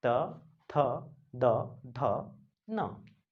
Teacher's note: जीभ दांतों को स्पर्श करती है, इसलिए त वर्ग को दंतव्य कहा जाता है